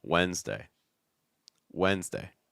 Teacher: That first D is not really pronounced. You could just do wens, like almost like, you know, the question word, like when's with an apostrophe s, like when's lunch, when's dinner, Wednesday, Wednesday.